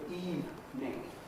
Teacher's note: And the only thing they ever say to me, it marks them as completely un-English straight away, un-English speaking, because no English speaker normally says anything but evening, 2 syllables. There's no middle vowel in the word evening.